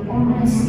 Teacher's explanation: di beberapa bahasa Inggris itu ketika huruf H itu ketika dia di awal beberapa itu dia jadi silent, jadi nggak dibaca